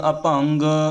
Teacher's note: ਅਭੰਗ ਇਹ ਵੀ ਗੱਗੇ ਦੇ ਸਹਿਤ ਬੋਲਣਾ, ਜਾਣੀ ਕਿ ਗੱਗਾ ਪੂਰਾ ਬੋਲਿਆ ਜਾਵੇ